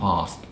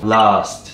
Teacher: だったりオーストラリアだったり、ね、ニュージーランドだったりみんなやってるんで。違いますよね。超面白いです、聞いてて。Fast▁とか速いとかも、速い、Fast▁って言って、うん、あの超音になるし、うん、であれもイギリス英語の方が喉の奥から出る感じになって、 オーストラリアはもっと日本語のあをそのまま伸ばしただけ 、はいはい、と、ほぼ一緒らしいです、音声学的に。Fast、そう、▁Fast、▁そう、▁Last▁とか、はいはいはい、最後のとか▁Last▁Minute▁とか。おお、こんな風になってるわけですね。そうなんですよね。だから▁minute▁も今の▁last▁minute▁っていうのも▁minute、はい、じゃなくて▁minute▁なんですね。ED▁の手話みたいな。last▁minute。そう、last▁minute。そうそうそう、そうなる